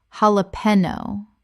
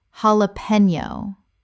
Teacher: The J makes an H sound in Spanish and the N Y makes a knee sound.